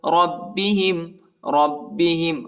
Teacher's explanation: را کو با کے ساتھ ملائیں گے اور با کو سختی کے ساتھ شدت کے ساتھ پڑھنا ہے